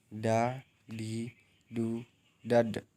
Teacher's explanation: melafalkan huruf Da dengan menyentuhkan ujung lidah kita ke gusi bagian atas dalam keadaan mati. Huruf Da terdengar suaranya mantul.